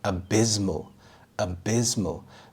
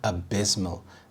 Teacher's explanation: The stress is on the second syllable, abysmal.